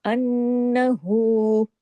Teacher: हु को वाव मद्दा के बराबर खींचते हैं